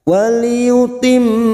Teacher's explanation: mim yang bertasdid Gun musadadah kita dengungkan selama tiga harakat